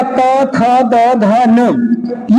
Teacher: ये जीवा आपके हमेशा दांत में स्पर्श करेगी। जब दंत में स्पर्श करने का काम करती है तो दंत वर्णों की उत्पत्ति होने का काम करता है।